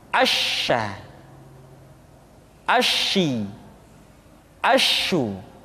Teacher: sifat atafasyi yaitu menyebarnya angin di dalam mulut kita · Dan sifat yang dimiliki oleh huruf sya yang paling nampak adalah apa yang disebut dengan sifat at-tafashi, yaitu menyebarnya angin di dalam mulut kita